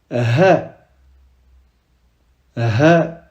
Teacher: On ne sort pas de l'air de la gorge comme le ha, mais c'est plutôt comme si on était à bout de souffle.